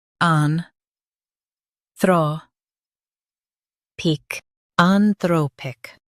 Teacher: Stress throw and keep peak light.